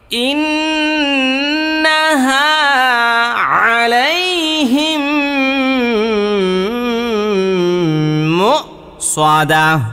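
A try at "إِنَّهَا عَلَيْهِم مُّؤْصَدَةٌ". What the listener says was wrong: আপনি এই সবগুলো হাই হুত্তি করছেন, মানে চাপ দিয়ে বলছেন, এই জন্য ভুল হয়েছে।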